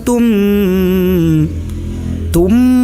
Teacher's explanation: Idgham Bighunnah cara membacanya itu ditahan dengan disertai dengung kehidung